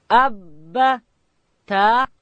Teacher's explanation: با ادا کیږي د دواړو شونډانو د یو ځای کېدو څخه